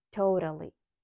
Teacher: totally, O as in go and flap T, totally